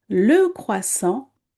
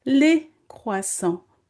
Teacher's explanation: Le with uh is different from les croissants with A.